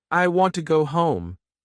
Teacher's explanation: Stress want and home.